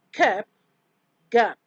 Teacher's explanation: Ka and ga are velar plosives.